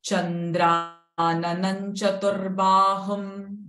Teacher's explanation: Anuswara followed by ch syllable. The anuswara's sound will become n.